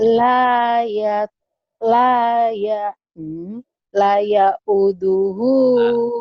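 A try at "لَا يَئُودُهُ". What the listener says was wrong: Lanya panjang Bu. Lanya panjang. panjang Bu. Bukan kurang panjang. Belum panjang Ibu mah.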